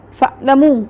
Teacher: अगर आप आइन की अदायगी जो है वो सख्ती से करें तो ये तो हमज़ा बन जाता है